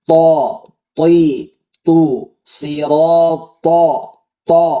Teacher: Ini th ya. Sama seperti ta makhrajnya tapi dia tebal. Naikkan pangkal lidahnya.